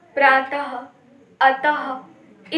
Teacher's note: विसर्ग का उच्चारण हल्के रूप से आधा ह के समान होता है